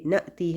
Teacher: جب حمزہ ساکن ہوتی ہے تو ہلکا سا جھٹکا آتا ہے کیونکہ ووکل کارڈز اچانک سے بند ہو جاتی ہیں